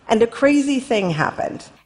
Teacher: She ends it at the end with a rising falling intonation.